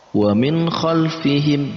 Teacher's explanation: nun mati bertemu dengan kha. Ini juga masuk dalam kategori izhar, yaitu jelas. Ya. Kha ini masuk dalam kategori huruf khalaq atau huruf yang keluar dari tenggorokan.